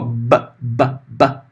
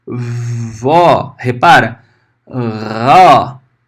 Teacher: Ele muda a letra de plosiva, que é um estalinho, né, para um sopro, para fricativa.